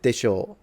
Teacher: with a lower tone rather than with a rising tone it kind of expresses a little bit of uncertainty